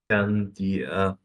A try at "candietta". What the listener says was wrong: You have to repeat the e in you have to repeat double the e in candy. Candietta. Candietta. The child kept pestering his mother for candietta. The child kept pestering his mother for candietta.